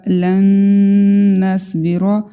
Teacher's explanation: نون شدد ہے، اس پہ ہم غنہ کریں گے، صاد اور را دونوں کو ہم پر پڑھیں گے۔